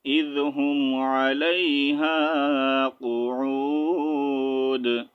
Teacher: دال کے اوپر ٹو پیش بھی پڑھنی ہے اور واو کے ساتھ بھی جوائن کرنا ہے